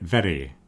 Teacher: So the R here sounds like Occasionally if you listen to certain dialects or certain old recordings the R might have been a bit more like a Spanish one. There was a tap R.